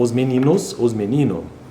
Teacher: os meninos não tem problema esse S sumir aí da pronúncia ou da fala